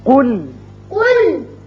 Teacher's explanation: قاف کو پر پڑھیے اور لام کو باریک